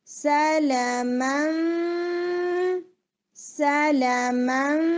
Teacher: Lips کے اندر میم کا جو ایک ٹچ ہے وہ آنا چاہیے، ورنہ سارا اخفاء لگے گا. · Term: اقلاب